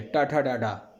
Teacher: देखिए, सब में जीभ मुड़ रही है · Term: मूर्धा